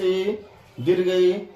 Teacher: हर्ष ई दीर्घ ई, बोलने में जीभ तालु टच करती है, इसीलिए हर्ष ई और दीर्घ ई का उच्चारण स्थान तालु होगा।